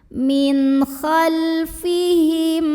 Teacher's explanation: mim sukunnya dibunyikan dengan izhar atau jelas m-nya ya.